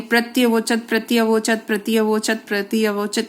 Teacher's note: प्रत्यवोचत, प्रति प्लस अवोचत, इसी को आप बोलकर देखिए, प्रत्यवोचत, प्रत्यवोचत, प्रत्यवोचत, प्रत्यवोचत। इसको बहुत बार बोलेंगे तो ई और अ मिल जाएगा, य बन जाएगा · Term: यण संधि